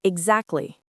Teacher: most of the time when I say it, I don't pronounce the T. I say exactly. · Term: dropped sounds